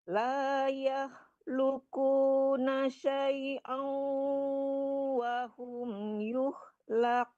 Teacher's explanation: Kalau syai'au cuman dapat tasdidnya, dengungnya belum ya. Syai'au agak ditarik ke hidung ya, Bu.